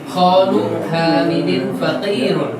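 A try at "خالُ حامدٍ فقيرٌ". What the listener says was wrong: Ahsan, bagus.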